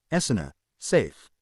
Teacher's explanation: the T's pronounced as glottal stops. The I and the T in it's lost somewhere, so that he was saying, Essena, safe.